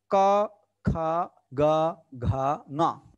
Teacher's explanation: They comes from our throat. That's why they are called guttural sounds, guttural consonants.